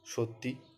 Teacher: এখানে অতিরিক্ত স্বরধ্বনি ইয়ের আগমন ঘটায় স্বরাগম সৃষ্টি হয়েছে।